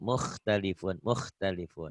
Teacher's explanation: kalau kurang kotor, takutnya ke ha, muhtalifun, bukan muh, tapi Kho, muh, kho, kho ya.